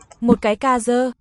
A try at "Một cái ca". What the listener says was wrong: The spelled D, but it sounds like a Z. Cái ca z.